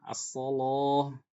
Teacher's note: Kalau lam didahului huruf tebal, shad ya, maka dibaca tebal lamnya. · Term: lam mufakhomah